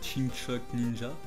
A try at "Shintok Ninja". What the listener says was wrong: Chinchok? Non, c'est Shintok Ninja.